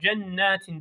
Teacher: nunun şeddeli haline dikkat ediyoruz O biraz genize gidiyor ses